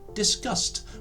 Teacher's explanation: To talk about a subject in a peaceful and constructive way to create the past tense, we add the letters e and d. But because the end sound of discuss is the s sound, the e and d letters create a t sound, resulting in the pronunciation discussed, which of course is exactly the same as the first word we looked at.